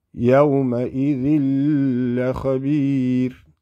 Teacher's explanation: So, yawma idhil khabir, lam fatha, kha fatha, ba kasra, ya stretching it, and then the ra, you're going to give it a sukun, so we're going to whisper the ra